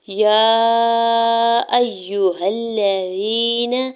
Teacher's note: یا ایہا الذین، یا کے اوپر کھڑی زبر اور مد منفصل ہے، 4 سے 5 حرکت کھینچ کے ادا کریں گے۔ حمزہ کے زبر کو یا مشدد کے ساتھ ملاتے ہوئے پڑھنا ہے، ہا کے زبر کو لام مشدد کے ساتھ ملاتے ہوئے پڑھیں گے۔